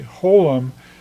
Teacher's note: it's a long o sound like in low